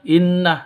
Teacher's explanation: Inna, biarawati dengan tashdid berdiri sendiri sebagai ghunnah musyaddadah, bersenandung selama dua ketukan